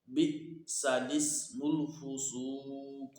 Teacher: اس کلمے میں لام سے پہلے اور لام کے بعد دونوں الف نہیں پڑھے جائیں گے، بلکہ لام کو زیر دے کر پڑھیں گے۔